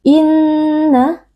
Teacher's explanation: Inna wajibul gunnah karena ada nun yang bertasydid, wajib dibaca dengan dengung yang dipanjangkan